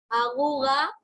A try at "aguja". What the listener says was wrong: Aguja, no es aguda, es aguja.